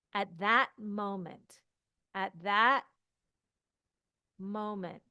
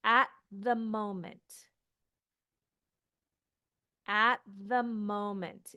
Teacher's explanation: when I say at that moment you're going to hear a stop at the moment no stop at the moment it just flows